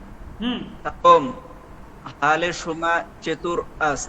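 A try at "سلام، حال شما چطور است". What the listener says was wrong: হাল কেন? হাল তো না, এই তো সেরে সাথে যদি আলিফ থাকে তখন উচ্চারণটা হবে অ, তাহলে হবে কি হ, নট হা। তাহলে তো সেদে কুতো হয়ে যাচ্ছে, হা বললে সেদে কুতো। আপনাকে এটা যেহেতু আলিফ আছে বলতে হবে হ, হ।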